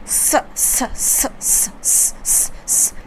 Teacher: तुम्हारा गरम हवा अपने मुंह से निकलेगी और सीटी जैसा थोड़ा आवाज़ में निकलेगी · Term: ऊष्म व्यंजन